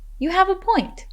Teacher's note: remember to emphasize the words have and point.